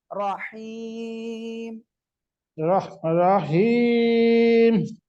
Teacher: রহিম গলার হাটা গলাটা চেপে উচ্চারণ করতে হবে